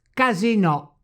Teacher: That's right, because the word casinò is of French origin, therefore the final O must be stressed when it is pronounced French style · to turn the word itself into a TRONCA word, that is, a word with the tonic and graphic accents right on the last vowel.